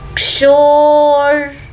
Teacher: शो को दीर्घ करेंगे दीर्घ करने के बाद रफार का र बोलेंगे